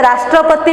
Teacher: राष्ट्रपति में आप रा पर बल देते हैं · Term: बलाघात